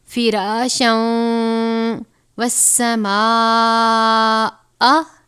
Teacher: تنوین ہے، اس کے بعد حروف یرملون میں سے واو آیا ہے تو اس کو ہم غنہ کر کے پڑھیں گے